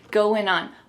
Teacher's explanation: we're gonna drop that G at the end of the word going.